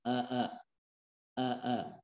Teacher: ketika mengucapkan hamzah, misalkan a, kita rasakan di tenggorokan bagian bawah ini bergetar, ya, bergerak di sini, bergetar.